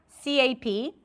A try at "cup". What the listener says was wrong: the back of the tongue needs to be a little higher, so you want to bring it up a bit more. Cup,